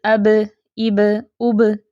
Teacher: اس کی آواز اچھلتی ہے جب یہ ساکن حالت میں ہو تو، جب یہ ساکن حالت میں ہو تو کلکلا ہوتا ہے نا، جیسے اب، اب، اب، ٹھیک ہے، تو جب یہ ساکن حالت میں ہوگا تو کلکلا ہوگا۔